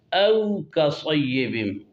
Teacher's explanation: او میں شروع میں حمزہ ہے، اس کا مخرج قص حلق ہے، یعنی سینہ کی طرف والا حصہ۔ او میں واو جو ہے واو لین ہے، اس کا مخرج دونوں ہونٹوں کا گول کرنا ہے، یعنی او نہ ہو او ہو۔